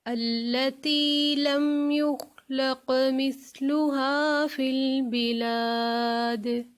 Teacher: یہاں پہ جو سا آ رہا ہے اس کو ہم مثلها نہیں بلکہ مثلها، سا کو اتنی نرمی سے ادا کریں گے کہ جو سین کی سیٹی ہوتی ہے نا وہ نہیں اس میں آتی